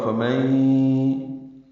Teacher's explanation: نون ساکن کے بعد یا آنے کی وجہ سے ادغام ہے، غنہ ہوگا، فمن آواز ناک کے بانسے میں لے جائیں گے.